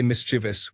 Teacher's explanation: I said and still say mischievous with stress on the second syllable.